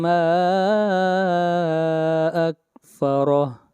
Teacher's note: اگلی آیت قتل، قاف کو موٹا پڑھیں گے، انسان، اخفا ہوگا، ما اکفرہ، ما کے اوپر مد منفصل ہوگی، ما کو 3 الف کے برابر کھینچ کر پڑھیں گے